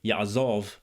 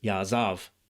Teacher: This vowel, called a kamatz, is pronounced aw in biblical Hebrew, at least in Tiberian pronunciation, while it's ah in modern Hebrew. That's why you heard ya'azov versus ya'azav.